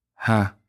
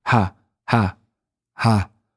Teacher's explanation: This is a breathy ha.